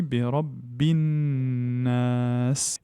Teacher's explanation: Parce qu'elle est suivie d'une lettre solaire qui est le nun. Donc à partir du moment où le lem est suivi d'une lettre solaire, le lem ne se prononce pas. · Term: lem solaire